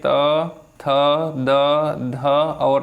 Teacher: जिनका उच्चारण ऊपर के दांतों पर जीभ लगाने से होता है उसे दंत्य कहते हैं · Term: दंत व्यंजन